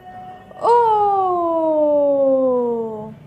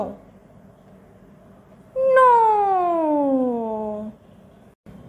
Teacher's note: glide in on the sound O from our high pitch to our low pitch